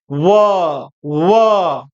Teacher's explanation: व जो होता है ये दंत और ओष दोनों का यूज करते हैं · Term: दंतोर